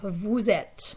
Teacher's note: notice that there's a liaison between the s and the e